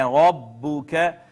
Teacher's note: را کو موٹا کر کے پڑھنا ہے